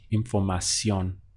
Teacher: you stress the last syllable the ending